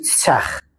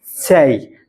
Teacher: Sadəcə bir az qalın y yox, biraz incə y formasında deməliyik.